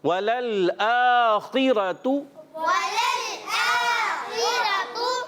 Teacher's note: خا حرف مستعلیہ میں سے موٹا, را پر زبر آنے کی وجہ سے یہ بھی موٹا.